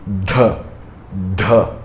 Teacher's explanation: Então você vai fazer um D com a língua no céu da boca falando D, e você vai fazer um D com a língua no céu da boca, Mahaprana soltando mais ar, falando D, D.